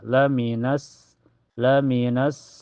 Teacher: cara bacanya alif lamnya tidak terbaca Ya, langsung masuk ke sin. Dan cirinya setelah alif lam ada huruf yang bertasjid yaitu di sin. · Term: alif lam asyamsiyah